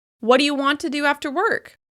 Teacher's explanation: it sounds a little weird to put extra stress on wadya. We're trying to rush through those words,